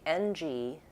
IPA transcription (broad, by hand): ŋ